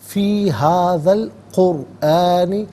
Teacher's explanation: میں سے الف یعنی حمزہ کو حذف کیا جائے گا، را ساکن ما قبل قاف پر پیش، را ساکن کو پر کر کے پڑھیں گے